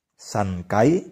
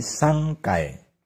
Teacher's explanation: Aksara N disusul dengan konsonan K, G, maka diucapkan eng. Seperti contoh kata sankai menjadi sangkai, yang berarti 3 kali.